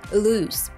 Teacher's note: it it's worth noting the correct pronunciation of the word loose be sure to hold the long ooh sound and end with a soft s sound avoiding the z sound which would make it sound like lose a completely different word